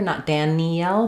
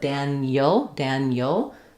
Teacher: And then we don't do an EL here, not Danielle, but Daniel, Daniel. So the EL sounds end up sounding more like yul, Daniel. And then because Danielle is stressed on the second syllable, we have a clear vowel there.